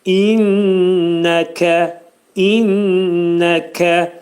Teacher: kəf hərfinin məxrəci demək dilin sonu və dilçəyin axırındadır